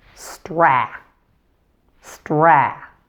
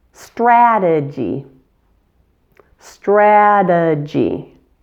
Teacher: Primary stress is on the first syllable